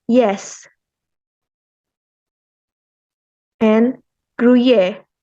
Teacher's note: the Y is the alveopalatal glides